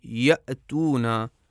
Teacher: حمزہ جب ساکن ہو، مثلا جب آپ کہیں یأتونا، تو ہم دیکھتے ہیں کہ آواز کی تاریں بالکل بند ہو جاتی ہیں اور بالکل ہوا گزرنے کی بھی گنجائش نہیں باقی رہ جاتی